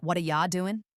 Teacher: We get rid of the T sound in what and the R sound in R. The U becomes a softer ya.